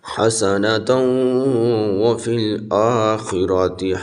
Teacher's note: حسنۃ غنہ ہوگا اوپر تا کے اوپر، حسنۃ وفی الآخرہ، یہ خا بریک پڑھی جائے گی اور را بھی پر پڑھی جائے گی، را کے اوپر زبر ہے۔